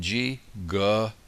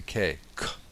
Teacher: These are the same letters. We use the vocal cord with G, G, and the same letter without the vocal cord is a K, K.